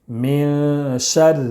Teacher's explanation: را مشدد کے نیچے زیر ہے، اس لیے را کو باریک پڑھیں گے